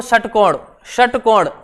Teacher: षटकोण जीव अंदर की तरफ जाएगी